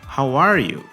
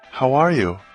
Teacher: Ele deu a ênfase no are. Agora, quando responde, ela dá ênfase no you.